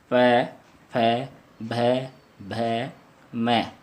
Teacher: ये क्या है, होष्ठ बोले जाते हैं। इनको बोलने में होठों से हवा टकराती है।